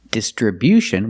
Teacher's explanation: distribution with the stress on the first and third syllable